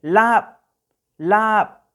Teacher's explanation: Luego la palabra lap, lap, entonces la letra A se prolonga, no es lap, sino es lap, lap. Se prolonga un poco el sonido de la A